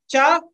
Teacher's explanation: चावर्ग जो पूरा है वो बोला जाता है तालू से